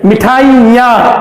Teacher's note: इस आ की ध्वनि को ही यहां पर अनुनासिकता का चिन्ह होने के कारण नाक के सहयोग से बोलना है, इसके पीछे कोई ध्वनि नहीं आनी चाहिए।